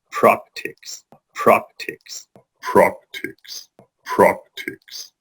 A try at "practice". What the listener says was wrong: But it's not pronounced like that at all. The end, the second syllable in the word practice, is is. It's is, soft S, is. So the way to put this together is to say is, then add the T sound, tis, then practice, practice, practice, practice.